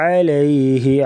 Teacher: عین جو ہے یہ حلق کے درمیان سے ادا کریں گے، رگڑ کھاتی ہوئی آواز سے پڑھیں گے